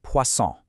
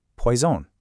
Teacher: Notice that little buzzing Z sound?